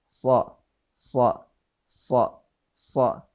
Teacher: So itu tempat keluarnya adalah lisan atau lidah, ya, sejajar dengan dua gigi seri bagian bawah tapi tidak sampai menyentuh. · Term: huruf shad